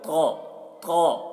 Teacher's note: طا کو پر پڑھ رہے ہیں، طا، طا، تا نہیں بولنا ہے